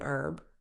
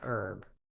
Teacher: Americans often drop the H saying herb while Brits pronounce it fully as herb